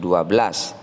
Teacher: nun sukun bertemu sin. Di sini ada dua, adalah bacaan ikhfa hakiki, dibaca mendengung, dua harokat. Ketika kita membunyikan nun sukun, lisan kita sudah siap untuk melafalkan huruf sin.